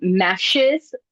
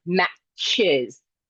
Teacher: The fricative is produced in the spot of an affricative.